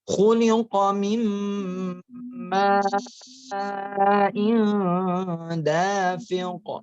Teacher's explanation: Ya, di idgham dimasukkan gunnah dengan didengungkan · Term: Idgham bi gunnah